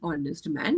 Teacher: Naturally, you're going to think this will start with a honest man, but it is an honest man because in this word, your H is silent. Okay, there is H in silent and there is a O sound that it starts with.